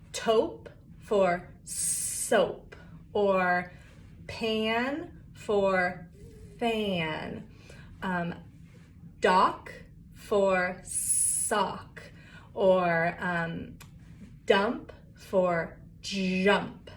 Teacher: So you're replacing an airflow sound with a stop sound.